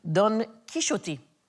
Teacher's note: the X is a sh technically because he's speaking old Castellian in the book and it should be Don Kishi.